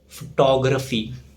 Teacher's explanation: The stress falls on tog